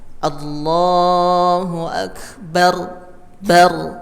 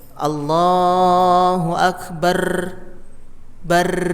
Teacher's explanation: ra-nya cukup dengan 3 getaran atau kurang. Jadi disedikitkan getarannya. Nah, jangan sampai Allahu Akbar bar tertahan.